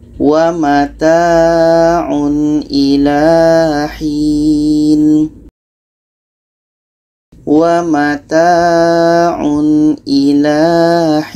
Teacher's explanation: Tanwin jelas, hamzahnya jelas, dan tidak ada dengung. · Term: izhar halki